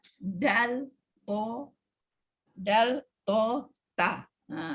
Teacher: Sedangkan dia duduk di satu bilik, hujung lidah bertemu dengan langit atas, langit keras, tu ya, dekat dengan gigi depan, pangkal gigi lah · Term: Sama makhraj